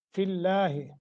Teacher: بھی کریں گے اور ادغام تو ہو رہا ہے، فی اللہ، لفظ اللہ کو باریک کریں گے، ما قبل کسرہ ہے ، لفظ اللہ کے پیچھے فا ہے، فا کے نیچے زیر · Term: ترقیق